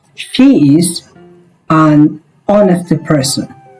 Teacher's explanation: Because h is silent, o is we are pronouncing o. We are not pronouncing h. So, the first sound that we are hearing is o sound.